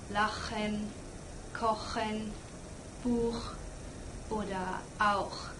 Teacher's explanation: the CH is also produced more in the back of your mouth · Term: Ach sound